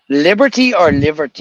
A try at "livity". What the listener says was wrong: Or live like L-I-V-I-T-Y. Yeah, you're putting an ER. L-I-V-I-T-Y.